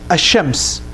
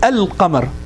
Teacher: when saying ash-shams, I kind of completely eliminated the lam. But when I said al-qamar, the lam is very clear.